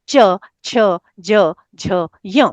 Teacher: हमारी जीभ का जो पश्च भाग है। है ना? वो तालु को स्पर्श करता है और वर्ण निकलता है। · इ च वर्ग य और श का उच्चारण स्थान तालु है। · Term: तालव्य वर्ण, तालव्य